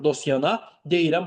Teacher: Bunları sənə dostana sözündə t düşür.